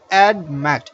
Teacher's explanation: It's a two syllabic word, but the stress falls on the last syllable.